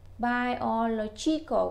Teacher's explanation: mình phải nhấn cái trọng âm ở chính giữa ngay chỗ chữ lo đó